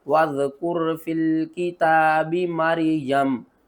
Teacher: وقف کی صورت میں میم کو ساکن کریں گے